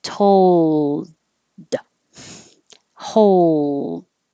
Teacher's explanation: Make the L noise for a little longer time so it can be heard before you end with the D, which is just stopping the airflow.